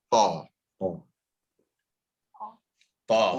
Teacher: So don't move your lips too much. Don't make the wa sound with the ta. It's not twa, it's ta.